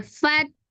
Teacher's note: ya tapi karena sesudahnya ada huruf bertasdid Maka langsung ditasdidkan jadi fa-nya tidak jadi panjang jadi langsung fat ya tapi ada agak penekanan ya Fat Oh itu seharusnya kan matobii karena setelahnya Fa itu